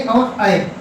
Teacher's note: ए और ऐ, इनका उच्चारण होता है कंठ धन ताल। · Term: ए दैतो कंठ तालु